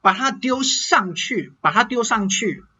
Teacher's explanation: When I say 把它, the ta here kind of loses its aspirated T sound.